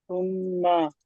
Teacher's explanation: এবং মিমের ওপরে তাসদিদ আসার কারণে তাসদিদ এসেছে, এটি একালিক পরিমাণ গুণনা করে পড়তে হবে।